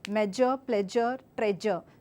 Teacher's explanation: the zh is being replaced by z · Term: regional influence